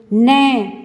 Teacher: इसकी आवाज हमारे नाक में से निकल रही है तो ये नासिका का हो गया और ये हमारे दांत को पीछे से स्पर्श कर रहा है तो इसलिए दंत प्लस नासिका तो दंत नासिका हो गया यानी कि दो-दो स्थानों से ये इनकी ध्वनि निकल रही है तो ये वर्ण वो वर्ण हैं जो दो स्थानों से हमारे मुंह से इनकी आवाज निकलती है।